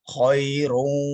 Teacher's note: Tebal setebal-tebalnya karena ini posisi tafkhim. Khairun, ya macam ada o-nya bersama dengan u ya, yang di o yang dimonyongkan